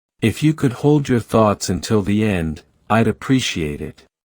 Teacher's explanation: Use a rising tone on end